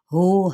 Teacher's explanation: हा वस्ते हलक से नहीं बल्कि अक्सर हलक से अदा करना, यानी सीने के करीब वाले हिस्से से